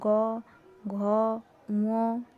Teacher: বাংলা স্পর্শ ব্যঞ্জনের অন্তর্গত প্রতিটি বর্গের তৃতীয়, চতুর্থ ও পঞ্চম বর্ণের উচ্চারণে শ্বাসবায়ুর ধাক্কায় কণ্ঠস্থ স্বরতন্ত্রীয় কম্পন হয় বলে কণ্ঠস্বর গম্ভীর হয়, এই কারণে এদের ঘোষ ব্যঞ্জন বা সঘোষ ব্যঞ্জন বলে।